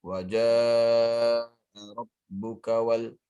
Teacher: Ja panjang 4 harokat.